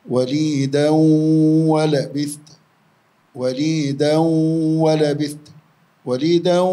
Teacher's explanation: وليدا طالت الغنة وهو إدغام بغنة مقدار حركتين